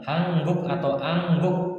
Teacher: Ini dibaca eng, n ketemu k dibaca eng